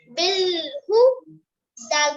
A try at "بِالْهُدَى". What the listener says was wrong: बस ज्यादा लंबा नहीं करना बिल हुदा इतना होगा